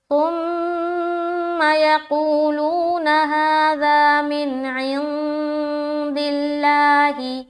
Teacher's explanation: لفظ اللہ کا لام کو باریک رکھیں گے کیونکہ لفظ اللہ کے لام سے پہلے کیا ہے؟ زیر کی حرکت ہے، تو اس لام کو ہمیں باریک رکھنی ہے۔